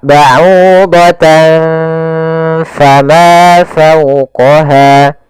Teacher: seakan-akan ada ng, tapi bukan, karena dia ikhfa